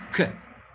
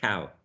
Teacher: Voiceless velar sound, K, as in cow. Again, initial sound.